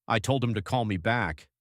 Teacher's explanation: The stressed words, told, call back, those carry the meaning. The little words like him and to and me are said fast and soft. Native speakers almost swallow them.